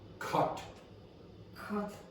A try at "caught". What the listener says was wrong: caught, caught, caught. Now, you were creating something in between those sounds.